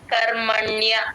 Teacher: అణ కి య వత్తు రెండు క్లియర్ గా వినిపించాలి